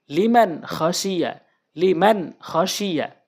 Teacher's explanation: নুন সাকিনের পর খ এসেছে, এখানে খ রয়েছে। তাহলে এই নুন সাকিনকে আমরা স্পষ্ট করে উচ্চারণ করব। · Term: ইজহারে হাকিকি